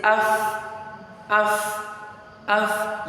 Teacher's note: And if you put your hand by your throat while you pronounce half, you see that that F sound will not give you any vibration while you are pronouncing it